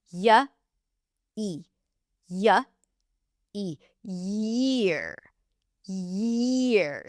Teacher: So, to say year, we want to say ear, which is the vowel, and add a yuh sound before.